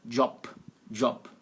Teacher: Em alemão, a palavra Job, o final soa como um P de pato